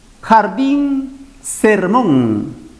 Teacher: Notamos que la última sílaba en cada vocablo es tónica, la que tiene mayor fuerza de voz. Y cuando la última sílaba es tónica, la palabra se llama aguda o también conocida como oxítona.